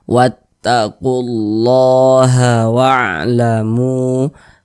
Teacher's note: Wattaqullaha wa'lamu, kemudian mu dibaca panjang. Ini namanya adalah mad jaiz munfasil.